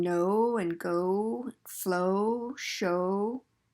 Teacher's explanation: Then the O sound as in know and go, flow, show, very common sound as well. The W just means that your lips are rounded when you say that O.